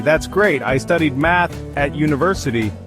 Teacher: Intonation rises on. That's great. Sounds friendly.